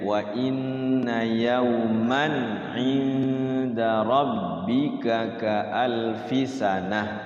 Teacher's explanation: Di situ ada tanwin bertemu ain ya, idhar.